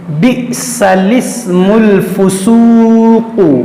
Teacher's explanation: لام سے پہلے اور لام کے بعد دونوں الف نہ پڑھیں بلکہ لام کو زیر دے کر پڑھیں۔ جیسے آپ کے سامنے یہاں پر دیکھیں کلمات جو ہیں، یہ لام سے پہلے جو الف ہے اس کو بھی نہیں پڑھیں گے، اور یہ لام کے بعد جو الف ہے اس کو بھی نہیں پڑھیں گے، اس لام کو اس سین سے ملا کر پڑھیں گے، بئسل اسم الفسوق۔